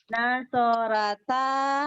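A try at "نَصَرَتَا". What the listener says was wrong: Nasorota, Bu ya. Memang Ibu biasa bilang ra ya. Ro ya, Bu.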